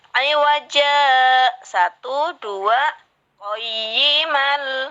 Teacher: Jadi di sini di saktah ini tidak boleh bernafas, berhenti dua ketukan, tapi tidak boleh bernafas.